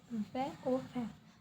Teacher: ये आपको इजीली याद हो जाएंगे क्योंकि ओष्ठ है तो ओ से मुंह से बोला जा रहा है, तो ये ओठ से, तो ये ओ औ है। दंतोष्ठ जो दांत और ओष्ठ दोनों से बोला जाता है